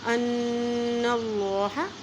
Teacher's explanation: اللہ کے نام سے پہلے زبر آ گیا ہے تو اللہ کا نام موٹا پڑھیں گے، اور نون کے پر شد آ جاتی ہے تو پھر وہاں پہ غنہ کیا جاتا ہے۔